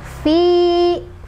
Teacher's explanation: Jadi kalau ya sukun sebelumnya harus kasrah untuk mad tabi'i. Dibacanya dua harokat. Fi dipanjangin ya.